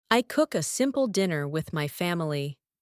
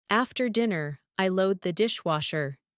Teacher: Pay attention to the calm, downward intonation we often use at the end of the day.